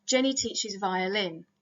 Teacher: now it's not that there is no accent in this example there is an accent the accent is on violin it's just that the accent is in an unmarked position it's where we would expect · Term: nuclear accents, nuclear accent